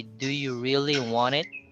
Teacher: It's an almost silent T when it's preceded by an N. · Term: obscured T